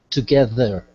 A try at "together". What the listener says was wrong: Where I'm noticing a slight weakness is when the TH sound comes within the word.